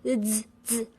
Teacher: Now, you need to focus just on Z, which is what comes before I, the initial. Z is actually D S as in kids. Z. Now, you need to voice it.